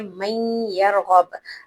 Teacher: मसलन हमारे पास लफ्ज है मन यरगब, अब हम इसे मीम नून ज़बर मन नहीं पढ़ेंगे क्योंकि यहाँ पर नून की आवाज नहीं आएगी। हम डायरेक्ट मीम को या से मिला देंगे, मीम या ज़बर मन, फिर या रो ज़बर यर, मन यर, फिर गैन बा ज़बर गब, मन यरगब। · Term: इदगाम